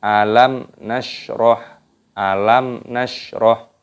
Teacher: Ini hukumnya dibaca idhar syafawi, dibaca jelas, jangan didengungkan.